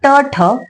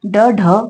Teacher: ट, ठ कठोर आहे, ड, ढ मृदू आहे आणि न अनुनासिक आहे